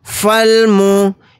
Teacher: یہ الف نہیں پڑھا جائے گا، فا کے ساتھ لام کو ملائیں گے۔